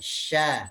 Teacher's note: tempat keluar hurufnya adalah pertengahan lidah. Nah, lidah bagian atas, nah bertemu dengan langit-langit. Bertemu dengan langit-langit di mulut kita. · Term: huruf shin